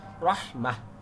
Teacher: রহ গলা মোটা হবে, মাহ ছেড়ে দিব, হা সাকিন ছোট হা আর কি